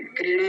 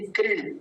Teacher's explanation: कृणा नहीं कृण, क्योंकि णकार जो है आधा है।